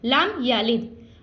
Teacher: دال ساکن ہے تو یہاں پہ ہم کلکلا کر رہے ہیں, یعنی آواز کو لٹا رہے ہیں. یہاں پہ غنہ نہیں کرنا اور آواز کو لٹانا ہے.